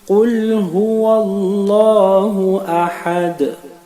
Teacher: qalqala dans la dernière lettre, le dal